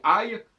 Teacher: Quand je dis aïe, je ne change pas le A. Le A reste là, mais je le prolonge par un I